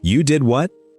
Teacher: It goes up much further than a normal question, and it starts higher. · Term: Surprise